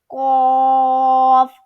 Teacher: ہم نے اس کو موٹا کرنا ہے اور 3 الف کے برابر کھینچنا ہے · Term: 2 نقاط والا قاف